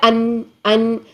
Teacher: جو ہمارے ناک سے آواز نکل رہی ہے، گنگنی سی ایک آواز پیدا ہو رہی ہے